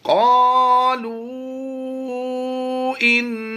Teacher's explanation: क़ालू इन्ना, हरूफ मद्दा के बाद हमजा दूसरे कलमे में चला गया तो इसलिए यहाँ पर हम मद्दे मुनफसिल करते हुए इसकी अदायगी करेंगे। इसे हम 2 अलिफ भी खींच कर पढ़ सकते हैं, 2.5 और 3 अलिफ खींच कर भी पढ़ सकते हैं।